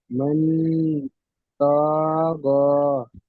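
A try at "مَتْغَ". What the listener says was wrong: ত টান হয়ে যাচ্ছে কেন? ত টান হবে না তো।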